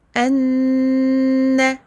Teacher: on garde le son du noun très longtemps